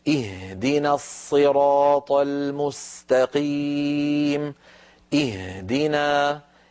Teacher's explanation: الهاء في اهدنا يا بنتي لا تجعليها تهتز